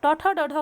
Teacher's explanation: ट ठ ड ढ का उच्चारण स्थान मूर्धा हो गया